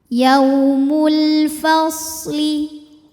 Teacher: Kemudian ada hukum alif lam ta'rif yang dinamakan alif lam qamariyah sebab ada alif lam yang menghadapi huruf qamariyah yaitu huruf fa. Cara bacanya lam dibaca izhar atau jelas. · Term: izhar qamari